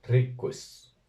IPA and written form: 'ri.kʷis (RIQIS)